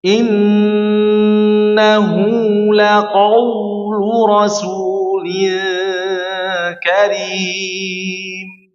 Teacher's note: Pertama huruf qof-nya disempurna jangan sampai merubah jadi kaf ya. · Lin artinya dibaca dua harakat.